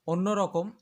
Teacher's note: শেষে বসবে ম তো তো এই অন্যরকম এই শব্দটি উচ্চারণ করলে শেষে ম এর সঙ্গে আর অ এর উচ্চারণ হচ্ছে না